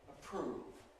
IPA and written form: əˈpr̥uːv (approve)